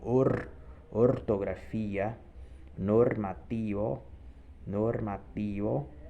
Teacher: O R, né? Ele vai ser sempre aquele R vibrante